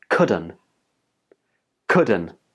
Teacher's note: when native speakers are speaking really quickly, sometimes the t sound in couldn't gets dropped